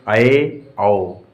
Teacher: अर्ध विवर्त स्वर, जब मुख द्वार आधा खुला होता है, उस समय जो स्वर निकलते हैं उन्हें अर्ध विवर्त स्वर कहते हैं।